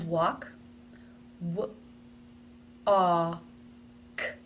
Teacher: the word walk, even though it is spelled with an L, has no L sound in it